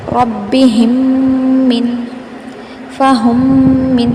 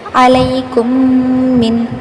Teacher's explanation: ہم ادغام کر رہے ہیں یعنی پہلی میم کو دوسری میم میں ملا رہے ہیں، ساتھ غنہ بھی کر رہے ہیں یعنی آواز کو ناک میں چھپا کر پڑھ رہے ہیں